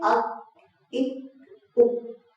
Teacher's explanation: तालु का जो सख्त वाला हिस्सा है जो एरिया है वहां से हम अदा कर रहे हैं काफ को